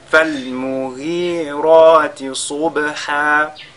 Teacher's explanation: Subha, vous faites Al-Qalqala sur la lettre Ba.